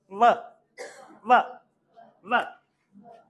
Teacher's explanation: लैबियो dental, एक होंट निचला होंट और ऊपर वाले दांत · वी just join the lower lip to the upper teeth